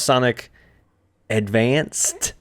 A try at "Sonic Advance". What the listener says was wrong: There's no D at the end. It's Sonic Advance. Just like it's the Game Boy Advance, so you don't say Advanced.